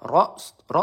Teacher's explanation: ro sukun harakat sebelumnya berharakat fathah hurufnya kita baca tebal